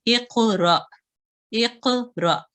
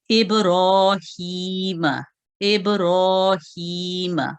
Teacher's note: पहला कलकला जो है वो जरा नरम होता है, इतना तेज जुम्बिश जो है उसकी हल्की होती है।